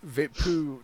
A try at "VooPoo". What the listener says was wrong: Voo-poo. No, you said vapoo drag. It's not an A, it's an O.